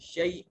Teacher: یہاں یا مدہ ہے، شیء یا ساکن ہے اور اس کا ما قبل متحرک ہے مفتوح ہے یا لین ہوگا، اس کو نرمی سے ادا کریں گے